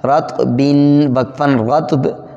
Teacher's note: اسی طرح آگے بھی یہی ترتیب ہے، نقص وقفاً نقص، رطب وقفاً رطب، 2 قلقلے ہو گئے ہیں، طا ساکن پہ بھی قلقلہ ہے اور با کو بھی وقف میں قلقلہ کر دیں گے